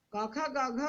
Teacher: इसमें एक अल्प प्राण है, एक महाप्राण है, फिर एक अल्प प्राण है, दूसरा उसी का महाप्राण है।